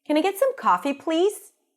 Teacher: I could say it with a higher pitch and a lighter tone of voice can I get some coffee please and I would sound friendly